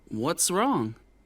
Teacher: And we talked about WH questions, which actually gives us a lot of information, but at the end of the question, the intonation goes down.